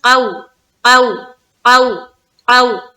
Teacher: واو لین کو ہم نرمی کے ساتھ جلد ادا کرتے ہیں، تو اس میں ہم کسی قسم کا جھٹکا یا کسی قسم کا دیر یا کسی قسم کا کھینچنا یہ نہیں کرنا ہے، بس سمپل طریقے سے پڑھنا ہے۔